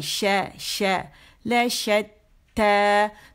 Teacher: زبان کا درمیانی حصہ اوپر جا کے غار کے قریب ہو جائے گا تاکہ تھوڑی سی گیپ رہے, جس کی وجہ سے شاورنگ ساؤنڈ جو ہے وہ آئے